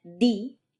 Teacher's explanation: But in Spanish, the tip of your tongue flattens out a bit, so that the tip of your tongue actually touches your upper teeth, and the blade of your tongue, that part right behind the tip, touches your alveolar ridge. This gives you a less percussive sound.